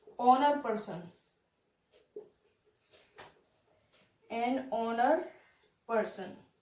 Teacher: In this word h is silent